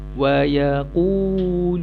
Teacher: Bunyi panjang tu, itulah makhrajnya daripada al-jawfu, rongga mulut.